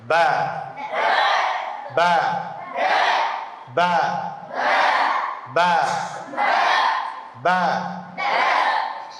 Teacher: দুই ঠোঁটের ভিজা অংশ থেকে কি উচ্চারণ হবে? বা।